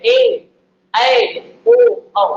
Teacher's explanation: ऐसे स्वर स्वर जिनके उच्चारण में दो मात्रा समय लगता है, दो मात्रा का समय लगता है, ठीक है, इसको द्विमात्रिक द्विमात्रिक स्वर के नाम से भी जाना जाता है।